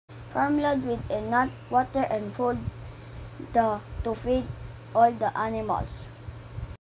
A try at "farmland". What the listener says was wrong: The learner omitted the sound of the letter n in the word farmland. He read it as farmland.